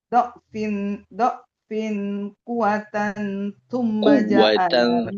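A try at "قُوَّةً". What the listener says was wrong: kuwatan Bukan kokonya yang fokus ke huruf waw yang ada tasdidnya. Kuwatan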